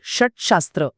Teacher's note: आणि अशी अनेक उदाहरणे आपल्याला दैनंदिन भाषेत ऐकायला मिळतात जसे की षड आणि शास्त्र एकत्र आल्यावर ड चा ट होतो